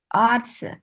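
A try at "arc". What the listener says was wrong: ఆర్స్ కాదు నాన్న, సి వచ్చింది, క ఆర్క్.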